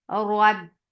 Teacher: Ra is heavy because this is with fatha.